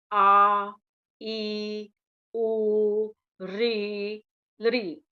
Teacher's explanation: दीर्घ स्वर जिन स्वरों के उच्चारण में ह्रस्व स्वर से दोगुना समय लगता है। ह्रस्व स्वर में बहुत कम समय लगता है और दीर्घ स्वर में उससे दोगुना मीन्स डबल समय लगता है, उसे दीर्घ स्वर कहते हैं।